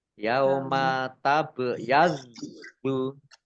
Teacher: bacaan kolkolah, dibaca memantul, ditampakkan pantulannya.